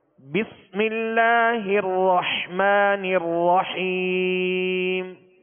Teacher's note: را جو مشدد ہے اس کو بھی دوہرا پڑھیں گے اور حا کو واضح پڑھیں گے.